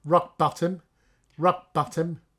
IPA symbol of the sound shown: ɜ